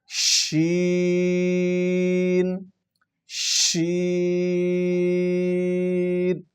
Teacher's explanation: اس میں تھوڑی سی منہ میں آواز کو پھیلانا ہے، ہم نے پھیلا کے آواز اس لفظ کو ادا کرنا ہے۔